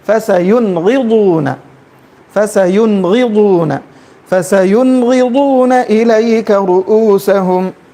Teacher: نون کو ظاہر کر کے نون کو بغیر کھینچے کے جو ہے پڑھتے ہوئے جائیں گے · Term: اظہار